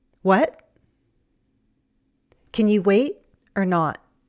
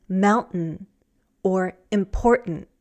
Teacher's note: American English speakers also use a glottal stop sometimes in place of a T. We cut off the sound when T is at the end of a sentence or before a pause.